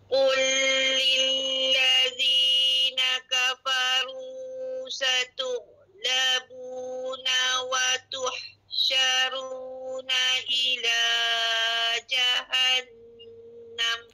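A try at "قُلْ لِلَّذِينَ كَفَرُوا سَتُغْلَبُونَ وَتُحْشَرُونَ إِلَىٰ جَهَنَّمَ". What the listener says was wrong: Alhamdulillah tidak ada masalah. Nah boleh a dikatakan semua sifat dan makar huruf tepat.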